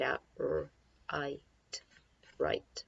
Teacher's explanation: have a WR blend you don't hear the W so I guess it's technically not a blend you just hear the R sound